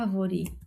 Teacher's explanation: A sua antepenúltima sílaba é a mais forte, então é uma proparoxítona